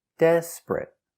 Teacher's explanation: two syllables the stress is on the first syllable desperate not three syllables desperate but two syllables desperate and the